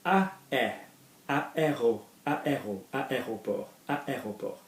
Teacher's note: Now, you are literally saying l'aéroport. You're linking an L apostrophe to this word